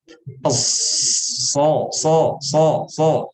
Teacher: Ya, terbedakan dengan zai dari sifat huruf. Shad itu isti'la sehingga dibaca tebal. So. Tapi awalnya sama, startnya sama nih.